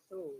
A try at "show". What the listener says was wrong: No, look at the difference. You're saying this. So it is show, show, sh. Can you make this sound? Sh, show. If you pronounce this word, if you make this sound, hissing sound, we call it. Show.